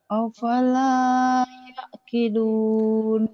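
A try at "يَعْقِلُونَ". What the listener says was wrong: Yakilun bukan yakidun. Yakilun, yakilun. Kedengarannya yakidun ya. Yakilun ya. Afala yakilun. Ya yakilun. Nanti dilatih ainnya biar mantep. Yakilun.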